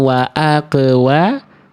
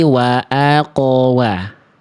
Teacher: Salahnya bunyi qaf sukunnya terlalu tipis ya.